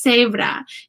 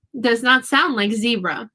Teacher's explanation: the vowel sounds are different and the Z is making an S sound